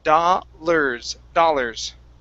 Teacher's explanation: you have the first part right that's going to be an ah sound but the ar is pronounced like an er